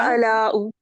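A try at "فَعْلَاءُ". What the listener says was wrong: हाँ, अब आपने पेश नहीं लगानी, ठीक है। सऊदाऊ, फअलाऊ।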